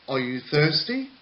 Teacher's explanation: one is rising where the intonation in the sentence only goes upwards